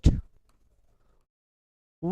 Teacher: इसमें केवल व का उच्चारण स्थान जो होगा वह आपका दंतोष्ठ होगा।